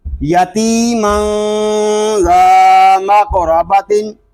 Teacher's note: قاف ساکن ہے، اس میں کلکلا خوب ظاہر کریں گے